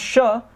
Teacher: When you pronounce sha, it's a palatal.